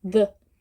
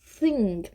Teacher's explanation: O som do TH aqui no the, ele tem som, ó. The. Já no thing, é só ar. Thing. A gente chama o que tem som de voiced e o TH que não tem som de unvoiced, né?